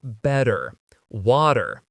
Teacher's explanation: In American English, a T that's between two vowel sounds, it doesn't always have to be a vowel, but between two vowel sounds is going to change to a D. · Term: change a t sound